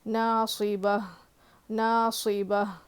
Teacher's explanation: جب بھی گولتا پہ ہم رک رہے ہیں، وہاں پہ سٹاپ کر رہے تو لاسٹ میں ہا کی آواز آنی ضروری ہے